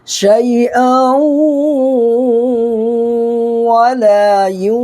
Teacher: 2 زبر کی تنوین کے بعد یومن کے 4 حرفوں میں سے واو آ رہا ہے تو یہاں پر ادغام مع الغنہ ہوگا، یعنی گنہ کے ساتھ پڑھنا ہے